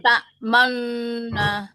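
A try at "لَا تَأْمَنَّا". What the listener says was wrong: Iya, terus yang lain.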